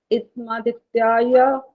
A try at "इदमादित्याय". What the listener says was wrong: इदमादित्याय बोला, वो ठीक नहीं बोला, इदमादित्याय बोलना, द भी पूरा आना चाहिए उसमें। इदमादित्याय, द इदम ऐसा नहीं करना, इदम करने का द हलन तो गया तो इदम, ठीक है, इद द पूरा बोलेंगे तो इदम आदित्य, अलग अलग करने पर हो जाएगा।